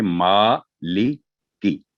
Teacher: मीम पर खड़ी जबर है, वर्टिकल फतह, तो इसे 2 सेकंड लंबी करेंगे